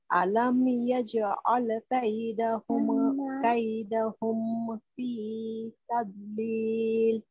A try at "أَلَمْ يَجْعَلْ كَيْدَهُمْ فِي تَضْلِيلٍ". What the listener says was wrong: জি আবার ধরে রাখতে গিয়ে বেশি না হয়ে যায় বেশি হয়ে গেলে তো মাদ হয়ে যাবে কাইদাহুম না কাইদাহুম কাই হালকা কাইদাহুম ফি তাদলিল